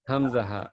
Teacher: Tenggorokan bawah hurufnya hamzah